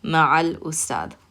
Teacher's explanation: Because the letter after the lam is the hamza. Hamza doesn't use your tongue. It's a moon letter. And in moon letters, we said that you pronounce the al sound. So you're going to hear that lam.